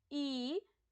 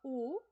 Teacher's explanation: सबसे पहले होते हैं हमारे संवृत, यानी कि जिसमें हमारा जो मुंह है बिल्कुल संकरा रहता है